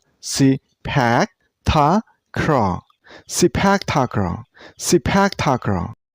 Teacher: this sport name has 4 syllables. Sepak Takraw. And you should stress on the second syllable.